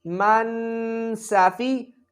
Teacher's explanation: سین حروف صفیریہ میں سے ہے تو سیٹی کی آواز آنی چاہیے